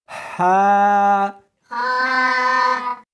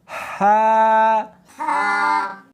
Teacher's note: اس کو حلق میں سے نکالنا ہے اور ساتھ میں ہوا بھی ہونی چاہیے. ہا ہاں نہیں پڑھنی بلکہ اس کو حلق میں سے نکالنا ہے، سینے میں سے نہیں نکالنا۔